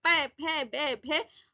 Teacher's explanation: ओष्ठे मतलब होठों के पास से आवाज आ रही है, प फ ब भ। होठ जो है आपस में मिल रहे हैं